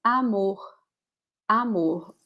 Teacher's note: let me see what else ah this one is not nasal this m is an exception it doesn't nasalize the first a